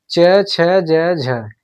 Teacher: च, छ, ज, झ यह हमारे ताल से बोले जाते हैं। यानी हमारे जो च, छ, ज, झ यह हमारे स्पर्श संघर्षी व्यंजन है।